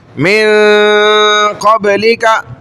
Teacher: غنہ بھی کر رہے ہیں اور نون کو ناک کی طرف لے جا کے چھپا بھی رہے ہیں. من قبلی کا نہیں کہہ رہے ہم, من قبلی کا نہیں کہہ رہے, میم نون زیر من ہوتا ہے, ہم کہہ رہے من ادھر لے جا رہے, چھپا رہے ہیں تھوڑا, یہ ہے اخفا.